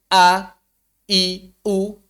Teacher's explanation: jadi makhrajnya Hamzah itu dipita suara Bagaimana caranya tinggal tutup pita suara getarkan pita suara tutup P